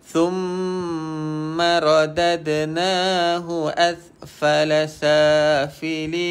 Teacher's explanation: Sin pastikan bunyi hams ataupun dia berangin sikit.